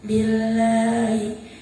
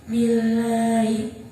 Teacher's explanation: Artinya Apabila dalam jalalah didahului huruf yang berharokat kasroh, maka cara bacanya tipis. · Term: lam jalalah tarqiq